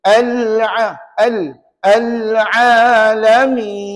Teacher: beza tak beza kalau alalamin seolah-olah tak dilencongkan lidah sedangkan rupa-rupanya nak sebut lam dia ada sifat inhiraf kena Lencong